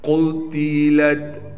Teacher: قاف کو موٹا کر کے پڑھنا ہے، تا کو باریک پڑھیں